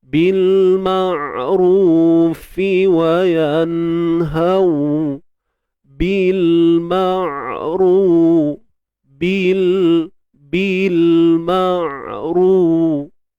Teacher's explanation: Wa ya'muruna bil, alif lam qamariyah, ma'ru, huruf ain yang bertanda sukun. Bil huruf ain ni jangan ditahankan suara tu, jangan dilepaskan. Jadi dia sedang-sedang. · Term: tawassut